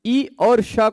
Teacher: उच्चारण स्थान इन दोनों का तालू है आभ्यंतर प्रयत्न इन दोनों का विवृत है